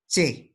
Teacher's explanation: se produce el sonido por oclusión y después sucede una pequeña fricción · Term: Africado